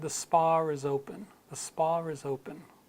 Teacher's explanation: so you can hear that the R comes in a little bit